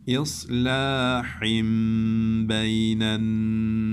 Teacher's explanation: Nunda da tuttuk ve kunneli okuduk uzattık. Ve burayı cezimlediğimiz için burayı fazla uzatabiliriz. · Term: İklap